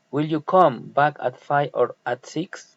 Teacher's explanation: alternative question rising and falling intonation